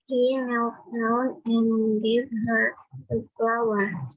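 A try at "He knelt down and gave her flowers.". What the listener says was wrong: Yes, S-nya kurang kedengeran. Flowers.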